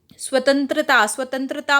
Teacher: स्वतंत्रता में सिर्फ और सिर्फ नाक से आवाज़ आ रही है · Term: अनुस्वार